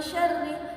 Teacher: bacanya pertengahan antara samar dan juga itu ada dengungnya seperti itu